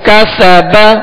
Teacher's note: سین میں سختی سیٹی کی آواز ہوگی اور اس کو باریک پڑھیں گے